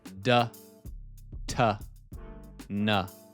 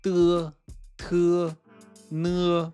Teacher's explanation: The DT and N in English and Chinese are slightly different. In English, these sounds touch the roof of your mouth, what's called the hard palate. D, t, n. In Chinese, they touch the back of your upper teeth.